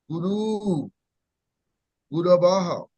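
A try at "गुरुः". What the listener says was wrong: So this is Guru Hu. Visarga is there. Guru Hu. So when you come across a visarga, there is a half breath. You have to breathe out half. Guru Hu. Guru Hu.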